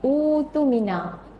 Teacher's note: Jadi kalau kita ikut kaedah ibdal, dia akan jadi hamzah itu digugurkan, ditukarkan kepada bunyi waw